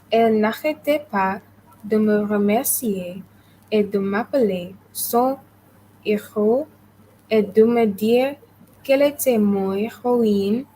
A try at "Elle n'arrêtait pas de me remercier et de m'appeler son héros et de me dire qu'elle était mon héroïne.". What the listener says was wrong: Down. So your voice needs to go down, and the teacher who is listening will know that it's a full stop.